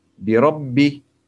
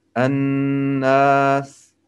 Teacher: I don't hold for two counts, just only I pronounce Shadda as normal. But I hold on An-Nas.